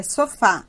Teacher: a tonicidade caiu na última sílaba, terminou em A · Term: oxítona